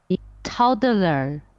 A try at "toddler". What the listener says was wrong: Yeah, I didn't really hear the L very strongly, Toddler, yeah, toddler.